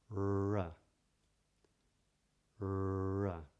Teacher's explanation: they curve the tip of the tongue up in the front of the mouth, so the tip is pointing towards the roof of the mouth , or what's known as the gum ridge, or the alveolar